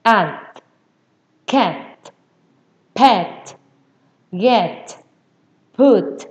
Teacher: cái âm t cuối cùng thì tôi bật lên là t, đưa lưỡi ra kề răng